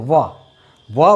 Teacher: जो प्राणवायु है, दंत और ओष्ठ से निकलती है और क्या हो जाएगा, ये दंतोष्ठ है।